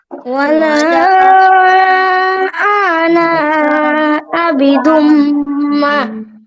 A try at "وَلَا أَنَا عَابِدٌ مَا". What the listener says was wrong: ওয়ালা আনা, এই আনা একটাও টান হবে না। ওয়ালা আনা আতে কি টান, আতে।